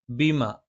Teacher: ബ രണ്ടു ചുണ്ടിൽ നിന്നാണ് മേലെ ചുണ്ട് അല്പം പുറത്തേക്കും താഴെ ചുണ്ട് അല്പം ഉള്ളിലേക്കും കയറി നിൽക്കണം